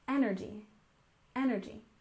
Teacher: And energy, we stress the first syllable, energy, energy.